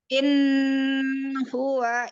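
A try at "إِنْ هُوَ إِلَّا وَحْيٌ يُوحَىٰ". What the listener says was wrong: Innya jangan ditahan. Izhar dia. In huwa illa.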